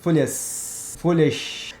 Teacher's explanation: Esse S sibilante ou chiado, depende, né? O meu é chiado, porque eu sou carioca. O teu pode ser sibilante.